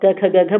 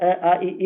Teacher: जब आप क ख ग घ बोलोगे तो टच होगा कहीं ना कहीं और जब जब स्वर बोलोगे आप अ आ इ ई तो कहीं नहीं टच होगा